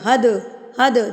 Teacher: دال ساکن ہے تو دال پہ ہم قلقلہ کریں گے، اس کو ہم ہلا کے پڑھیں گے حد، حد، دال کو ہلائیں گے. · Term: دال قلقلہ